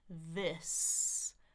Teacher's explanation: Notice my jaw's not opening hardly at all because what we call the short I is just a little bit open. My lips are very relaxed.